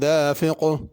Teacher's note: دافق آخر میں بڑا قاف ہے، چھوٹا کاف نہیں پڑھنا۔